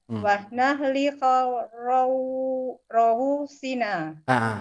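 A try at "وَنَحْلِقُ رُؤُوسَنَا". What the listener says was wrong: Bukan ru'usina. Ru'usana. Ulang.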